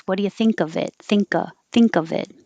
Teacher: if there's a vowel after it, now you'll hear the K release.